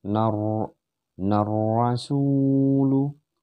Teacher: Nar rasulu. Jadi nunnya melebur ke dalam ro yang tasjid di sini, dan di sini disebut dengan ada alif lamnya ya, alif lam syamsiyah, jadi harus langsung melebur masuk.